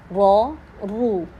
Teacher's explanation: اب جب رو پڑھا تو ہمارے ہونٹوں کی شیپ میں ڈفرینس آ رہا ہے، اب یہ تھوڑے سے گول ہو رہے ہیں۔